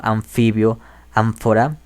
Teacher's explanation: Esta M, labio dental, la encontramos en palabras en las que la N se encuentre con una F, como anfibio, ánfora, sería una N que sería más bien una labio dental nasal. Esto ocurre porque preparamos la lengua para producir la F.